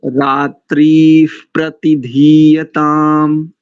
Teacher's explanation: विसर्ग का यहाँ पर उपध्मानीय हो रहा है उच्चारण में। तो रात्रि प्रतिधीयताम ऐसा उच्चारण आएगा।